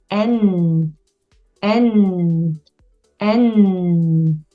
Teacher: 호흡을 조금 늘려서 N, N, N. 코로 호흡이 빠져나오는 걸 조금 느껴보세요.